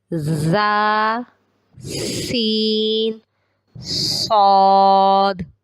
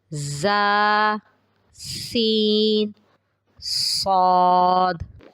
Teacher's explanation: آپ نے محسوس کیا ہوگا کہ ان تینوں حروف کی ادائیگی میں سیٹی کی آواز آ رہی ہے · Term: حروف صفیریہ